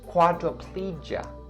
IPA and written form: ˌkwɑː-drə-ˈpliː-dʒə (quadriplegia)